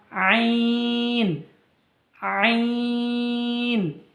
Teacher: গলার মধ্যখান হইতে উচ্চারিত হয় গলার মধ্যখান হইতে উচ্চারিত হয় বা কণ্ঠনালীর মাঝখান হইতে উচ্চারিত হয়